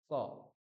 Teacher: আপনার জীভের গোড়ার অংশটা কন্ঠের সঙ্গে মিলছে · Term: ককার